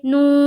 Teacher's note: نورو، نون واو پیش نو، را پیش رو، نورو، نو، واو ساکن سے پہلے پیش ہے، واو مدہ ہوگا، واو مدہ کو ایک الف کے برابر کھینچ کر پڑھیں گے